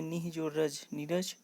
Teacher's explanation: विसर्ग का लुप्त हो जाना